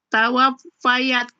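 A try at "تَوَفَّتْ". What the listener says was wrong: Kok tawafayat? Ianya kan tidak ada harokat. Jadi?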